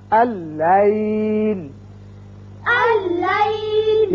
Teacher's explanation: پہلا لام لکھا تو گیا لیکن پڑھا نہیں جائے گا. یہ حمزہ بشکل الف اس لام سے تشدید کے ساتھ ملے گا.